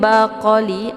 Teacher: ada qaf sukun yang terdapat di pertengahan kalimat, ini dinamakan dengan qalqalah sughra. Cara bacanya, qafnya dipantulkan dengan pantulan ringan. Jadi qa ini juga termasuk huruf qalqalaf ya.